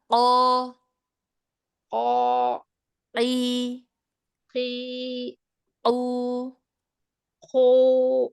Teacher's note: Coba qo qo qi qi qu lebih ke belakang lagi makhraj qof. Di mana qof ke belakang lagi dari kaf ya.